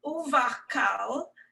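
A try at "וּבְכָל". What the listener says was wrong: So it's not a hard k sound, it's more of a ch sound. Chal, uvchal.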